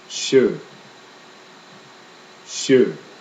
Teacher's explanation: SJ together sound like the English sh combination with a Y